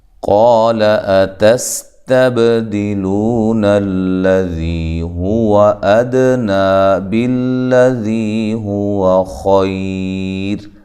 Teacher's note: قال اتستبدلون الذی هو ادنی بالذی هو خیر، قا الف مدہ ہے اور قاف کو خوب موٹا کریں، اس کے ساتھ الف بھی موٹا ہوگا، لام باریک ہے، لمبا بھی نہیں کرنا۔ تا باریک، سین باریک سیٹی سے، حمزہ کو تحقیق سے، تب تا کو باریک پڑھنا ہے، با پہ قلقلہ کرنا ہے۔